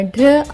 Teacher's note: డిఆర్ యొక్క శబ్దం ఢారా కాకుండా ఢ్ర అవుతుంది